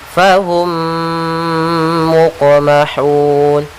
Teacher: Yaitu cara membacanya, mim yang pertama masuk kepada mim yang kedua, kita tahan gunnahnya. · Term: idgham mimi